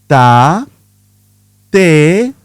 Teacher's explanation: In Spanish, the T is softer. Your tongue touches just behind your teeth. No big puff of air. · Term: soft T